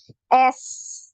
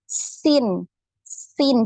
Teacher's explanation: di ujung lidah nempel di gigi seri bagian bawah kemudian suara keluar melalui cela-cela yang sempit jadi suaranya tajam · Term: huruf Sin